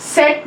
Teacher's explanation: front अनराउंडेड vowel between half close and half open